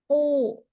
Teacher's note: qaf dia pangkal lidah, lidah bagian belakang menempel dengan langit-langit paling belakang sehingga tidak ada udara yang mengalir atau sedikit sekali udara yang mengalir ketika disebutkan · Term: huruf qaf